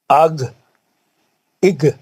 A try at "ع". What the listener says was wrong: نہیں یہ گائن نہیں ہے، یہ آئین ہے.